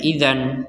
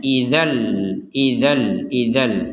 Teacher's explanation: kita membacanya memasukkan tanwin atau Fathan ini kepada huruf lam sehingga terbacanya bukan Idan lagi sekali lagi jangan dibaca Idan tapi